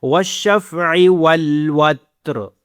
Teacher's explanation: عین آپ کے گلے کے اوپر والی سے آواز نکلے